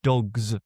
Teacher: even all those plurals like dogs, where really it's a voiced Z sound